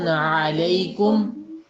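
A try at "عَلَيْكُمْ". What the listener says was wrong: کم، کم تو ویسے رہے گا، آئین جو تھا اس کو آپ نے الف اور آئین جو تھا مکس کر دیا تھا۔ ایک دفعہ پھر پورا پڑھ لیجئے۔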